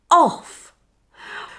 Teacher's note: The OFF sound is a combination of the short vowel sound O and the unvoiced F sound. To make the OFF sound, just shorten the OR sound like this.